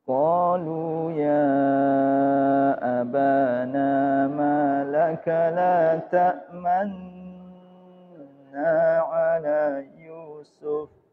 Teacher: Jadi ismam pengertiannya adalah di tengah-tengah dengung bibir harus mencucu sebagai isyarat dhamma